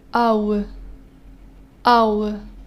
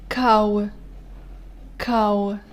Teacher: And the last diphthong in this column starts with a and ends with u.